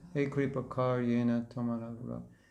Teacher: usually they don't pronounce the A at the end, like the word kara would be kar